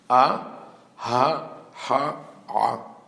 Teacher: The letters that we call groniot, that come from the throat, are aleph, hey, het, and ayin.